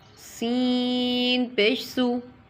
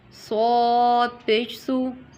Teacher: سین میں سیٹی نکلے گی، صاد میں سیٹی نہیں نکلے گی